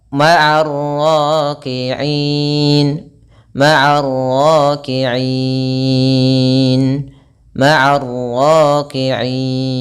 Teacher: i-nya itu kita boleh panjangkan 2 harakat, boleh 4 harakat, boleh 6 harakat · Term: mad arid disukun